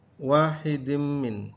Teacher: tanwin bertemu dengan mim, idgham bi gunnah